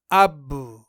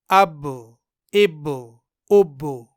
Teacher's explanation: बा में कलकल करते वक्त दोनों होंठ बंद होकर फिर से थोड़ा सा खुल जाते हैं जिसकी वजह से फिर से बाकी थोड़ी सी आवाज पैदा होती है जो जबर और सुकून के दरमियानी हालत में होती है यानी · با میں قلقلہ کرتے وقت دونوں ہونٹ بند ہو کر پھر سے تھوڑا سا کھل جاتے ہیں، جس کی وجہ سے پھر سے با کی تھوڑی سی آواز پیدا ہوتی ہے جو زبر اور سکون کے درمیانی حالت میں ہوتی ہے، یعنی آدھے زبر اور آدھے سکون کی آواز، اب۔ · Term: कलक की आवाज